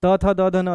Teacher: त थ द ध न दंत हो गया